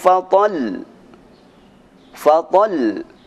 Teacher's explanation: Selanjutnya berhenti pada huruf yang bertasydid, yang mana huruf terakhir bukan huruf qalqalah dan bukan huruf nun. Maka cara membacanya cukup ditekan dengan kuat. Jangan sampai ditahan lama-lama seperti lam tasydid, ra tasydid, ya tasydid dan sebagainya.